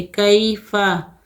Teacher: یا ساکن سے پہلے زبر ہے، یا لین ہے، نرمی اور جلدی کے ساتھ پڑھیں گے